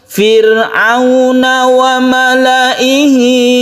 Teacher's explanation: fir'aun sukun ra itu kita baca tipis atau tarqiq karena apa? Karena sebelumnya ada kasroh, jadi membacanya tidak tebal. Fir bukan, tapi yang betul adalah fir tipis.